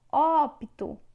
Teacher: A sílaba tônica é o op.